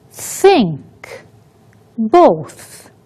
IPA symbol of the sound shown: θ